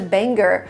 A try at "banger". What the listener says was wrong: We don't pronounce the word banger, banger. We don't pronounce the hard g sound. We say banger, banger.